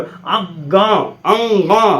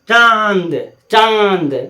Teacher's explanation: अनुस्वार और चंद्र बिंदु वाला जितना शब्द होता है इस सब का उच्चारण नाक से होता है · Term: नाक में विब्रेशन